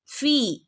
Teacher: ഫിന്റെ കൂടെ യാ മദ് വന്നിട്ടുണ്ട് അവിടെ രണ്ടനക്ക് നീട്ടി കൊടുക്കണേ